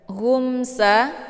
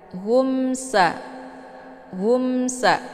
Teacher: Hukum bacaan idhar syafawi, dibacanya jelas tiada berdengung.